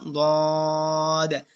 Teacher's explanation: জিহ্বার গোড়ার কিনারা উপরে মাড়ি দাঁতের গোড়ার সঙ্গে লাগাইয়া